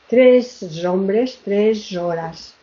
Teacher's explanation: sacamos la coda, la ponemos como apertura a la palabra siguiente y automáticamente la sonorizamos